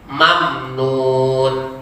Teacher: Tidak boleh dibaca lama mamnya. Salah jadinya.